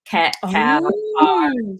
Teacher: the K and the G, so we call those your velar, your back sounds